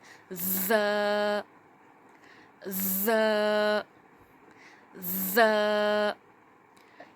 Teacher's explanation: ز سختی والا لیٹر ہے، اس میں سختی کی جائے گی اور اس میں سیٹی کی آواز بھی آئے گی۔ ز، ز، ز۔ اس میں زبان کی نوک نیچے کے 2 دانتوں کے جڑ میں لگے گی اور پیچھے سے ہوا کا جو پریشر آئے گا دباؤ کی وجہ سے، اس کی وجہ سے اس میں ایک ہوا کی وجہ سے سیٹی کی سی ساؤنڈ آئے گی۔